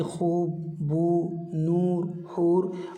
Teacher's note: थोड़ी सी गोल सी आवाज़ और खींच करके आए, थोड़ी सी आवाज़ खींचे · वाव मारूफ, ये वाव खींच करके पढ़ी जाती है